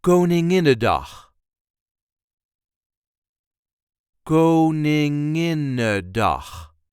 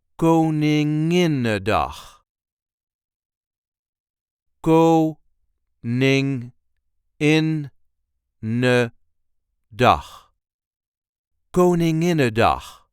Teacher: The emphasis then is on the second in, in.